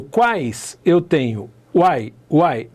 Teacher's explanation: duas semivogais penduradas numa vogal e uma vogal no meio, certo? Então o tritongo é uma semivogal mais uma semivogal na mesma sílaba, nessa mesma ordem.